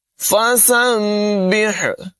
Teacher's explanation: سین کی آواز میں سیٹی پیدا کریں گے، باریک آواز ہوگی، اور سین کو با سے ملائیں گے۔